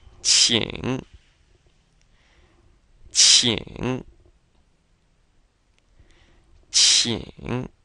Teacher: it's actually like saying cheap but smiling and instead of putting a t on the end you put an NG on the ending